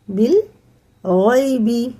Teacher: یا ساکن سے پہلے زبر ہے تو حرف لین ہے، جلدی پڑھیں گے۔